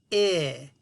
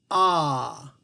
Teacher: Both of these sounds make my voice box vibrate.